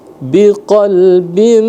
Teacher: kasratain bertemu dengan mim idgham bi ghunah maka dibaca ghunah